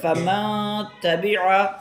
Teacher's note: نون کو مکمل طور پر پورا ادا نہیں کرنا ہے بلکہ نون کو ضعیف اور کمزور ادا کرنا ہے، یعنی اس کے اندر غنہ کرنا ہے، ناک کے اندر آواز لے جانی ہے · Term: اخفا